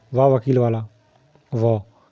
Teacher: है तो वा वण का उचा ं तोष है क्या है दांत के साथ में ओस्ट का प्रयोग होता है · वा वर्ण का उच्चारण स्थान क्या है, तो वा वर्ण का उच्चारण स्थान दंतोष्ठ है। क्या है, दांत के साथ में ओष्ठ का प्रयोग होता है, तो ये क्या है, दंतोष्ठ है, वा वकील वाला व। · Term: धन तोष